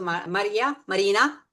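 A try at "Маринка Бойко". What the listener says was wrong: No, not Marina, Marinka. Marina, just with a K in it.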